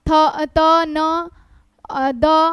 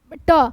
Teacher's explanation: ट यह दंत में नहीं होता, यह मूर्धा से बोला जाता है, दंत से नहीं बोला जाता है।